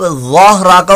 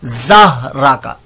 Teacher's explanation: की आवाज में पढ़ दे, जह राका, ये गलत हो जाएगा, वाह की आवाज में सीटी वाली आवाज पैदा नहीं होती